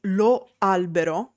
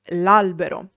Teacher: For example, instead of saying lo albero, the tree, we say l'albero, where the vowel o in lo is elided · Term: elision